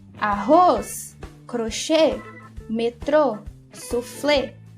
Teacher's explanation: a última sílaba é a mais forte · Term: oxítonas